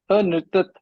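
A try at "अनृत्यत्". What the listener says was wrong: Anrityat. Nrityati, no. See, how to remember is, think of the lat rupam. Nrityati becomes anrityat. Yakara asti atra.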